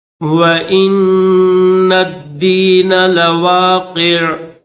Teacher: وَإِنَّ الدِّينَ لَوَاقِعٌ، وَإِنَّ، یہ جو حمزہ ہے اس حمزہ کو نون کے ساتھ ملائیں گے، یہ نون ہے، اس کے اوپر تشدید ہے، اور یہ جو نون ہے اس نون کو دال کے ساتھ ملائیں گے، درمیان میں یہ الف نہیں پڑھیں گے، اس کے ساتھ یہ لام بھی ہے، اس لام کو نہیں پڑھیں گے